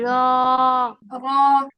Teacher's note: জিহ্বার আগার পিঠ উপরে তালুর সাথে লাগিয়ে র উচ্চারিত হয়